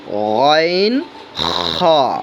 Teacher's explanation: তিন নাম্বার মাখরাজ হলকের শেষ ভাগ হইতেন খ অর্থাৎ আপনার কন্ঠনালীর শেষ যেখানে তিন নাম্বার মাখরাজ হলকের শেষ হইতেইন